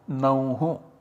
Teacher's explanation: Similarly Naur, this is 1/1 of Nau and so this R is substituted by a Visarga because there is nothing that follows, there is Avasana that follows, and so we get the finally derived form Nauhu.